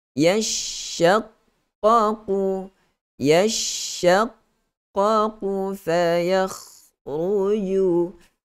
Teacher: Perhamburan angin di antara gigi hadapan, okey. Maksudnya angin kita kita hamburkan kita punya suara itu melalui celah-celah gigi kita tu, baru dia boleh bunyi macam tu. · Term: tafashi